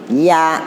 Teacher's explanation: Nempel ke langit-langit tengah lidah.